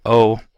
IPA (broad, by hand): o